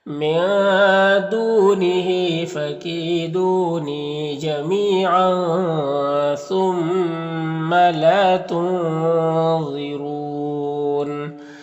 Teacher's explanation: تنوین کے بعد ثا ہے تو تنوین میں اخفا ہوگا، اس کے آواز کو ناک میں چھپا کر ایک الف کی مقدار گنگنا کے پڑھیں گے